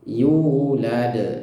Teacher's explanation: La, setelah itu ada dal sukun. Nah, ini jelas sekali dal sukun, sehingga langsung dipantulkan dengan kuat. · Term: pantulan